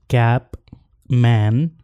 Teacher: And nasal प for example कैप, मैन. प बोलते हुए लिप्स ओपन नहीं होंगे